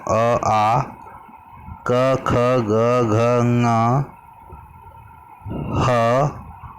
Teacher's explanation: ये जो स्थान हैं, ये सारे जो वर्ण हैं, ये सारे वर्णों के लिए उच्चारण स्थान कंठ है। यानी इन वर्णों के उच्चारण में जिह्वा कंठ की ओर अधिक जोर लेती है